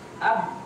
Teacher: langsung dia menutup pada makhrajnya, tidak lagi mengeluarkan suara ataupun udara karena disumbat di situ sama dia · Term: huruf syiddah